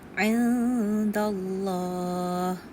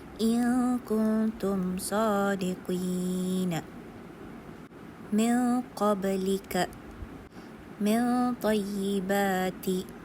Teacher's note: kita ni dengungkan huruf nun sebelum kita ni jumpa arah huruf yang di bawah ikhfa hakiki